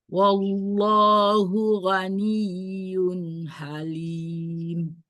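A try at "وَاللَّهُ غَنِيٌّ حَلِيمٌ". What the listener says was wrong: Wallah ditebalkan lafuz jalalahnya. Wallahu ghaniyun halim.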